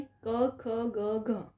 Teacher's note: આ ક, ખ, ગ ક્યાંથી નીકળે છે? આપણા કંઠમાંથી, એટલા માટે એનો પ્રકાર કંઠ્ય છે